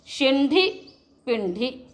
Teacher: मूर्धन्य ण रखेंगे, है ना, शिंढि, श तालव्य रहेगा